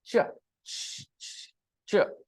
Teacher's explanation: Vocal cords are silent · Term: ch sound